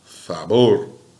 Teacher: as oxítonas são agudas em espanhol. Olha lá, a sílaba forte, a sílaba tônica, é a última